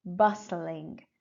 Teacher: As you can see, T is not pronounced in bustling, so it's just bustling, bustling.